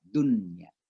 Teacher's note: Tapi karena nunnya berada di tengah kata, ini dibaca jelas izhar.